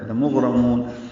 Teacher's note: لام کو جلدی ادا کرنا ہے، غین ساکن پہ اظہار